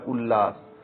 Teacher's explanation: त के बाद यदि ल आता है तो त का ल में परिवर्तन हो जाता है